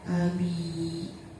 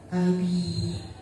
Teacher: Di situ ada mad yang didahului dengan huruf ba yang berharakat kasrah, maka cara bacanya panjang. Panjangnya 1 alif atau 2 harakat